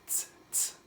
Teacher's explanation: And the noise that this letter makes, the pronunciation is ts, ts. It's kind of like an S noise, but you have a little bit of a T in there. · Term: Sade